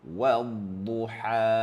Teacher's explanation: Huruf dad merupakan huruf yang perlu disebut dengan tebal.